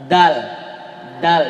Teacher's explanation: Dia lidah tidak sampai keluar. Kalau umumnya kita orang Indonesia ini sering keluar saja. Da ya. Dia di dalam da. · Huruf dal ujung lisan dengan gusi atas sama dengan ta tadi, sama dengan to. Dal ya. Dia lidah tidak sampai keluar.